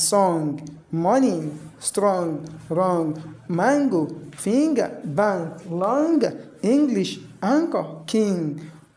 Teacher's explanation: Whenever the time we have any of these letter combination, the N there will give velar nasal sound.